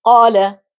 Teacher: Now more examples of mad asli are qala. Here the length of mad is natural, which is one alif or two harakas.